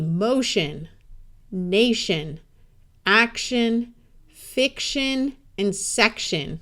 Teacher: in all of these words, the O sound disappears and sounds like a short U? And the T and the I together have a sh sound. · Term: shun